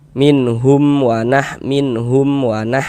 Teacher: Maka dibaca jelas bunyi mim sukunnya. Kemudian tidak didengungkan, maka dibaca pendek saja. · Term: izhar syafawi